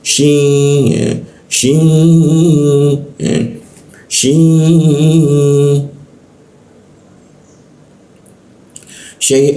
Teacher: sin bertemu sya itu ditahan dan didengungkan.